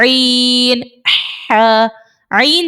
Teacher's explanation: ईन जब हम अदा करते हैं तो इसमें जो है आवाज थोड़ी सी स्क्विज होती है हम जैसे कपड़े को निचोड़ हैं ना ऐसे ही अपने हमने